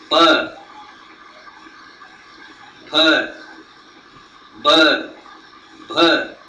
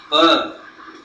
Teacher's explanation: Only your two lips are joining together and creating a sound.